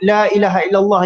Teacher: Jadi ini adalah hukum mad jaiz munfasil, ya. Jadi apabila berlaku hukum mad jaiz munfasil ini, maka bacaannya boleh 2 harakat atau 4 harakat atau 5 harakat